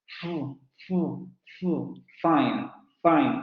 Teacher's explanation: vamos a pegar el labio a la zona de los dientes vamos a producir turbulencia